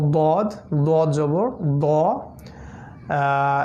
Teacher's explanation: জিহ্বার পার্শ্ব চোয়াল স্পর্শ করবে, দাঁতের মাড়ির স্পর্শ করবে